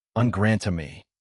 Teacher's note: In grand by itself, the final D is silent. Before the vowel in armée, liaison lets it surface, but the sound is devoiced. You hear a T, en grand armée.